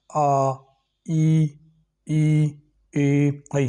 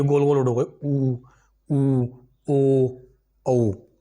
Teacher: जिन वर्णों का उच्चारण करने में जो हमारे होठ हैं वो एक गोल, मतलब वृत्त टाइप हो जाते हैं, गोलाकार हो जाता है इनका शेप, तो वो कहलाते हैं हमारे वृतमुखी।